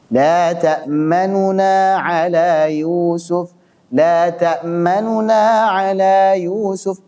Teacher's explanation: Yang nu-nya yang nuna, kayak orang gremeng gitu, ngegas dan tidak terlalu jelas. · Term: Ikhtilas